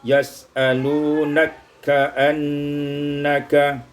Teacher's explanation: idghamul kaf fil kaf, diidghamkan kaf pada kaf